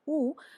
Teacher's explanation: तो पहले प्रकार का जो ध्वनि है वह है उ जो कि अल्पकालिक थोड़े समय के लिए वो है उसका एक मात्रा की गणना होती है।